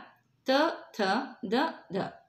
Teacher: ಅದೇ ಥರ ತ ಥ ದ ಧ ಅದು ದಂತ್ಯ. ಅಂದರೆ ಹಲ್ಲುಗಳ ಸಹಾಯದಿಂದ ನಾಲಿಗೆಯ ತುದಿ ಮೇಲಿನ ಸಾಲುಗಳಿಗೆ ತಾಕಿ ಉತ್ಪತ್ತಿಯಾಗುವಂಥ ಅಕ್ಷರಗಳು